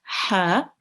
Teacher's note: the ha will be pronounced from the middle of your throat, ha, and again, the ha carries a vertical fatha, and it will be prolonged for 2 seconds again.